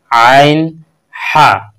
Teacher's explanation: তিন নম্বর মখরজ হলো গলার মাঝখান গলার মাঝখান থেকে আদায় করা হয় আইন এবং হা